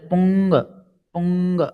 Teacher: દાખલા તરીકે તમે જ્યારે પુંગ પુંગ એમ શબ્દ બોલશો ને તો તમે જોશો ઊંગ બોલતી વખતે નાસિકા, નાકમાંથી હવા વધારે બહાર નીકળશે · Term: અનુનાસિક